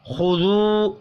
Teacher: خا حروف مستعلیہ ہے، پر پڑھیں گے، واو مدہ کو ایک الف کے برابر کھینچ کر پڑھنا ہے